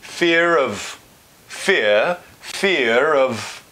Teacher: That R might come back in if it's linking into a vowel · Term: linking R